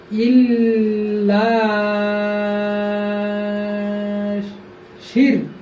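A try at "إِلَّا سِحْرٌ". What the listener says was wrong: আবার বলে শি এটাই তো হারে ধরলো, সিন ধরতে হারে, তুমি শি বলছো কেন?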